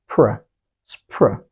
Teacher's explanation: Let's take the first word, and its consonant cluster is spr, spr, spr, a consonant cluster of three consonant sounds, s, p, and r. The right way to pronounce such a consonant cluster is to say spr, spr, with no intervening vowel sound between them.